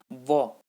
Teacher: आप व का उच्चारण करेंगे तो जो दांत है हमारे वो होठों को टच होंगे, व, तो जो दंत हैं वो हमारे होठ को छू रहे हैं, इसलिए जो है इसको दंत्योष्ठ वर्ण बोलते हैं।